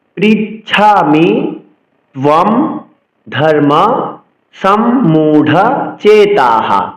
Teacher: সংস্কৃত শ্লোক উচ্চারণে বিসর্গ যখন শেষে থাকবে তখন বিসর্গের উচ্চারণ হ করতে হয়